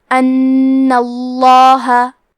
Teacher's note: کلمت ان میں حرف نون پہ تشدید ہے، لہذا 2 حرف کے برابر نون کو پڑھنا ہے، اور کیونکہ تشدید زبر کا ہے لہذا لفظ الجلالہ کے لام کا حکم ہے تفخیم، تو ہم حرف اللام کو موٹی آواز میں پڑھیں گے۔